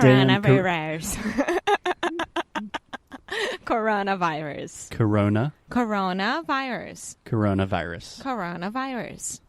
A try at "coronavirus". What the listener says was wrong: We do need to do some work with your R's. Corona. There we go. Coronavirus.